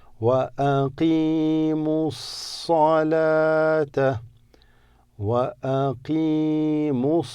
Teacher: The ya doesn't have anything, so you just extend the qaf with the kasra.